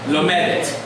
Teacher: you're going to keep the accent on the second syllable